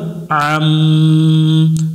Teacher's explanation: আইন মিম জবর আম, আইন অক্ষর গলার মধ্য থেকে একটু চেপে পড়বো, মিমের উপর তাসদিদ আছে, গুন্না করবো, এটা ওয়াজিব গুন্না।